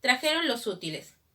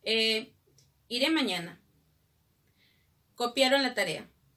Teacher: el tono descendente se asocia a las oraciones enunciativas.